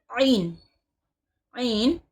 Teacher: عین حلق کے درمیانی حصے سے ادا ہوتا ہے